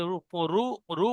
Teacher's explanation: মুখটা একটু গোল হচ্ছে, আওয়াজটা মোটা হচ্ছে, এটা হলো পুর। আর এটা পুর পড়া হচ্ছে সিন জবসা, দা রসা, তো এটা র পুর হলো। · রু রু রু বলার সময় মুখটা একটু গোল হবে। রুর, র র পেশ, দুটো র একসঙ্গে আছে, একটা র সাকিন একটা র পেশ।